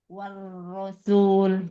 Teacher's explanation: hati-hati wa-nya jangan tebal Ibu, jangan wur.